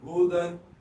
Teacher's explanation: ہا پیش ہو، دال دو زبر دن، ہودن، ہودن. ہا حلق کے نیچے والے حصے سے ادا ہوگا